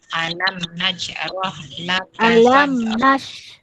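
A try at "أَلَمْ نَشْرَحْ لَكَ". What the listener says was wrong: nash huruf syah. Alam nashrah.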